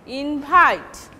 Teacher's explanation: The first syllable will be secondary stress, but the second syllable will take primary stress, invite. But this is verb.